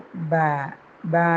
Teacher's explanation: ബ 2 ചുണ്ടിൻ്റെയും നനഞ്ഞ ഭാഗത്തു നിന്നാണ് പുറപ്പെടുക.